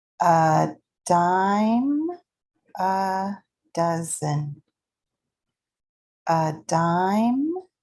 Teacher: dime is stressed and held out longer